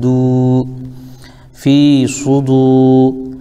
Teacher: واو ساکن ہے اور دال کے اوپر پیش ہے اس لیے واو مدہ ہو جائے گا، اس کو بھی کھینچیں گے